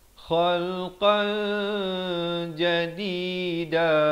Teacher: Ikhfa hakiki, tanwin bertemu jim disamarkan